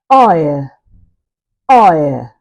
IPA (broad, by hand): aɪə